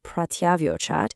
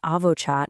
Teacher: Look at the yan sandhi rule in the word pratyavochat, which means replied. Prati plus avochat merges the i and a to create this ya sound.